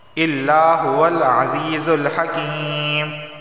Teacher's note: الا الف سے پہلے زبر آیا ہے، ایک الف کے برابر کھینچ کر پڑھا جائے گا